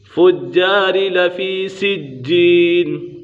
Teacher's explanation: یہاں پر جیم کے اوپر قلقلہ ہو رہا ہے اور مد عارض کا قطع بھی لگ رہا ہے۔